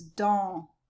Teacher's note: No S, and the N just makes it nasal